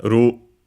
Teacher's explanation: in Japanese we don't have the sound l so it becomes the closest one which is r uh the Japanese r.